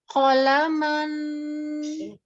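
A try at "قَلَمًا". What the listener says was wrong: Oh, jangan dikasih ujung juga. Jangan qolaman. Adannya itu tidak berlaku. Itu berlaku hanya nanti ketika ada nun tasdid. Kalau nunnya tasdid, kemudian diwakafkan, maka dia disukunkan, disertai dengan gunnah. Tapi kalau ini kan tidak bertasdid, hanya sempurna nun sukunnya, tapi tidak ditahan. Qolaman.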